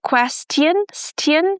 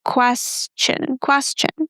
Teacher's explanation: It's not s t, it's s plus the ch sound as in church.